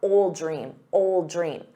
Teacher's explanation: You want to say ol. So drop that D, ol, but then attach it to the noun